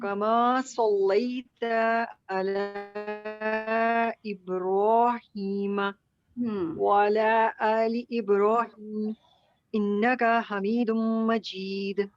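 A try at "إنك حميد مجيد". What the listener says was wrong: انک، ان کو لمبا، انک، کا لمبا ہو گیا. کاف کا لمبا ہو رہا ہے، کاف کے ساتھ ہا جوڑ دینا. انک حمی، کا حمی.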